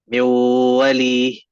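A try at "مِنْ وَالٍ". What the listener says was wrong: Not mew. When you say mew, that means you are not making the gunna sound. You are saying the wow only. The nasal cavity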